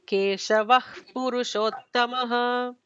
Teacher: We'll just add an extra emphatic H after Keshava, and it'll be Keshavah Purushottamah.